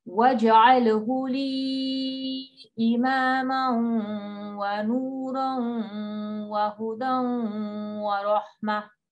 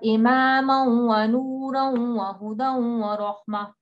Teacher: you've got to hold this waw mushaddad for 2 counts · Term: ghunna